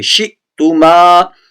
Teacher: شِئْتُمَا میں پڑھتے وقت حمزہ کے اوپر جزم ہے، یہاں جھٹکا دینا لازمی ہے